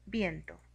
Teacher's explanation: tenemos el encuentro de una vocal cerrada y una vocal abierta. Es un diptongo creciente.